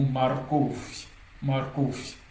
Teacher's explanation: le R est bien roulé. C'est pas comme le français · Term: R qui est bien roulé